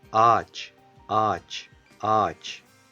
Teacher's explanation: there is always a vowel before yumuşak G, so we read that vowel a bit longer than normal